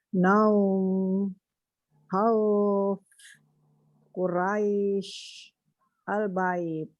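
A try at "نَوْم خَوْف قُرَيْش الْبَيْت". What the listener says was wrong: Coba yang 4 harokat gimana coba? Naum 4 harokat. Tadi 2 harokat. Ya, semua huruful hijaiyah tidak boleh dibaca memonyong kecuali huruf waw atau huruf tersebut berharokat dhamma.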